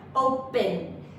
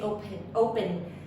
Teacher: it's not with that puff of air